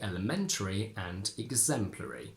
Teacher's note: before Ary we can't say Eerie both in elementary and exemplary the main stress Falls onto the syllable right before the one containing the a of a r y